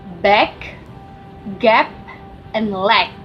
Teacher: The first is plosive. Basically, these are consonants where the air is blocked at the place of articulations to accumulate pressure, and it is then released in one instant